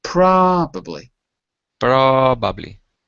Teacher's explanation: notice it's the first syllable that has a stress